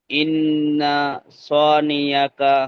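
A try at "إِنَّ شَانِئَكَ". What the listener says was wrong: স, স হয়ে যাচ্ছে, স হবে না, সা। হ্যাঁ, ইন্না শানিআকা।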